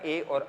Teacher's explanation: ए और ऐ आप लोगों के उच्चारण किए जाते हैं कंठ और तालु दोनों से।